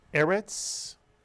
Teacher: Eretz begins with a segol, and therefore the accent is on the first syllable